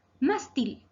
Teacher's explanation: Palabra grave, acentuada en la sílaba más. Y lleva tilde porque termina en la consonante L.